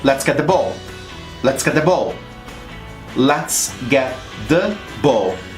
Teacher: I do not connect ball and rolling, but let's get the ball is easily connected.